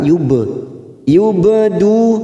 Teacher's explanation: karena mati di tengah kalimat jangan lupa dipantulkan